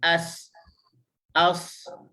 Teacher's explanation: Infitah hujung lidah duduk bawah, dia duduk relax. Dia tak ada lekukan. Bila tak ada lekukan, dia duduk bawah lah.